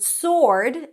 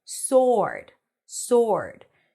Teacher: the word sword is pronounced without the w